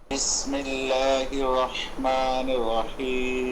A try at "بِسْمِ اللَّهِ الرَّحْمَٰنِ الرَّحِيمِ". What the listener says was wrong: বিসমিল্লাহর মধ্যে যে ভুলটি হয়েছে, বিসমিল্লাহির রহমানির রহিম পড়েছেন উনি বিসমিল্লাহির র, হির র মুশাদ্দাদ, এখানে দুই রর উচ্চারণ করতে হবে। বিসমিল্লাহির রহমানির রহিম।